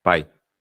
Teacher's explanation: E o I, que é uma semivogal porque é fraca.